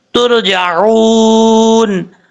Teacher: را ساکن سے پہلے پیش ہے اس لیے را کو پر پڑھیں گے